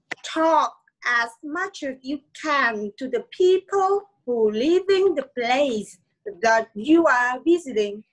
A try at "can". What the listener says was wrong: Can. A bướm chưa được. Can. A bướm. Can. Can. Can.